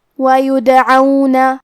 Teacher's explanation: دال پہ جزم ہے تو ہمیں دال کو قلقلہ سے پڑھنا ہے، اور قلقلہ کا معنی ہے حرف ساکن کو ہلانا، تو ہم دال کو ہلاتے ہوئے یہ کلمہ کو پڑھیں گے